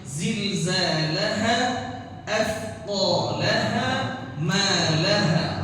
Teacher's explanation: Panjangnya semua sama ujungnya. Jangan ada yang dipanjang-panjangnya lebih dari itu.